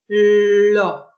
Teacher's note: Si esa L yo la voy a combinar con una vocal labializada, la producción de la L va a ser combinada con una labialización. Yo elevo el ápice lingual para hacer la L y automáticamente también voy a hacer un abochinamiento de los labios para la producción de la O.